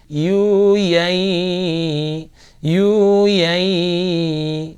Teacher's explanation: Yu yai gitu, ada suara sedikit cempreng di hidung ya. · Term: idgham bil gunnah